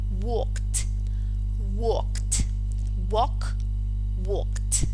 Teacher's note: ends in this voiceless Villar plosive walk so in this case what we do is to add the voiceless alveolar plosive so the resulting pronunciation is walked walked walk walked let's see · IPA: /t/